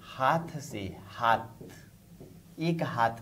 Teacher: खड़ी बोली में में कि यदि कहीं कि शब्द के अंत की महाप्राण ध्वनि है तो वह अल्पप्राण की तरफ उच्चारित होती है